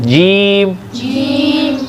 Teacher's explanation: जीम पढ़ते वक्त ज़बान की साइडें जो है दाढ़ों की जड़ों पे लग जाती है और जो ज़बान का दरमियान वाला हिस्सा है वो तालू पे लग जाता है